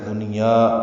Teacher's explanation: یا کو 2 حرکات لمبا کریں گے اور یہ مد اصلی الف مدہ ہوگی